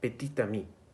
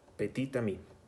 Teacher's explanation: Cela sonnerait petit ami. Donc la consonne finale de petit devient sonore. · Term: liaison obligatoire